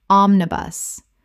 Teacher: three syllables with the stress on the first